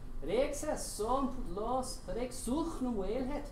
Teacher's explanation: You'll note that a lot of the ch sounds have been taken out